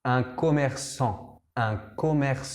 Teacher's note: la consonante del final es una t la t no se dice